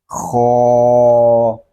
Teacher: خو حلق کے اوپر والے حصے سے ادا ہوگا اور یہ حروف مستعلیہ میں سے بھی ہے، اس کو ہم پر بھی پڑھیں گے